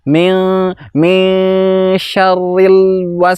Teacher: Yang benar adalah sifatnya tawassut. min syarril l-nya ditahan sebentar.